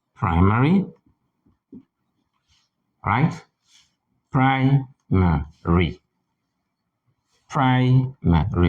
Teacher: Primary, with the stress on the first syllable.